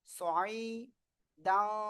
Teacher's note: সয় আইনটা একটু গলাটা চেপে পড়তে হবে।